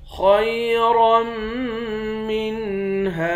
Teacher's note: خا اور را دونوں کو موٹا پڑھیں گے